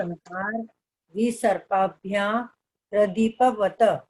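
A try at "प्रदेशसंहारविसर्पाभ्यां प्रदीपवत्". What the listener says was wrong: वत नहीं बोलना है, वत तो आधा तोड़ा हुआ है, आधा है, उसको प्रदीपवत ऐसा बोलना है।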